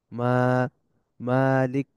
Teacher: এটার মিম এরপরে খাড়া জবর আছে মানে মা এক আলিফ লম্বা হবে